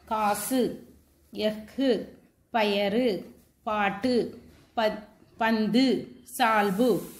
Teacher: 6 வல்லின உகரங்களும் சொல்லின் இறுதியில் வரும்போது ஒரு மாத்திரைக்கு பதிலாக அரை மாத்திரை அளவே ஒலிக்கும். இவ்வாறு தனக்குரிய ஓசையில் குறைந்து ஒலிக்கும் உகரம் குற்றிய லுகரம்.